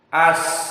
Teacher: Maka rasakan sifatul huruf di sini rokhawah. Di saat antum mensukunkan sin, masih ada yang mengalir.